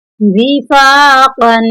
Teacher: وفا, قوف دو زبر قن, یہاں پر دو نقطوں والی قوف ہے, اس کو موٹا پڑھیں گے